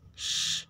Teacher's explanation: voiceless palatal alveolar fricative